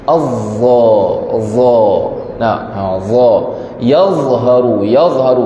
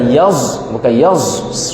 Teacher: Huruf dha ini sebutannya hujung lidah berada dekat antara 2 gigi.